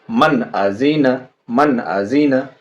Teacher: نون ساکن کو صاف صاف بلا غنہ کے، بنا ناک میں آواز لے جائے ، بغیر دیری کیے ہوئے جلدی سے، اسی کا نام اظہار